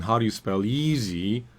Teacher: Easy is the important word. So it has to be clearer and longer and and emphasized compared to the other words.